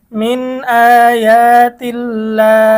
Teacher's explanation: এখানে আল্লাহ শব্দের লামকে আমরা চিকন করেছি, পাতলা করেছি।